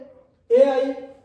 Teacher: तालुकंठीय स्वर कौन सा है, तालु और कंठ से आवाज आती है